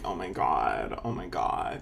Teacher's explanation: we still hear a lot of people speak with vocal fry